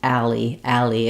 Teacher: We do run it together. I have to move from a to ul to e